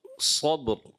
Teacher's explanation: बा में कलकला और रा की अदायगी भी है।